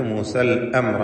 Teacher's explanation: റാഇന് പൂർണ്ണമായ തഫ്ഖീം കൊടുക്കണം